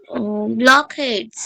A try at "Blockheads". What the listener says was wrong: হ্যাঁ ব্লকহেডস।